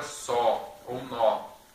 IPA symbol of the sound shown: ɔ: